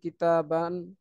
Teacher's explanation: এগুলো দেখেন আমার নাক দিয়ে কিন্তু উচ্চারিত হচ্ছে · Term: তানবিন